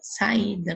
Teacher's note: quando eu falo, fica o A em uma sílaba e o I fica sozinho. Então, hiato, as vogais, elas se separam, elas não ficam juntas, tá?